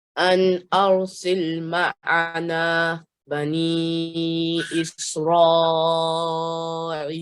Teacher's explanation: you prolonged this ra, which carries here a mad kabir, which is an extra long stretch for the right amount of time